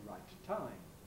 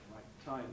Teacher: you make the closure at the end of the eye right you hold it for rather longer than usual then you release it with aspiration